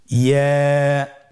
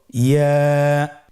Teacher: ইয়া হরফটি উচ্চারণের ক্ষেত্রে বারিক হবে এবং 1 আলিফ টেনে পড়তে হবে।